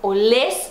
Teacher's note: Aí é olés, sílaba tônica no final